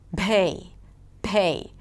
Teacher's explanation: And then when it's unaspirated, it might sound like a B: so 'pay' might be received as 'bay'. And then they sometimes might aspirate the B sound, and that sound doesn't exist in English